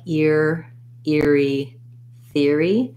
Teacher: even when i am doing the th sound my tongue is already back and ready for the r sound